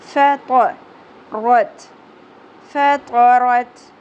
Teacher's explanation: تو کی ادائیگی میں آپ نے اتباق بھی رکھنا ہے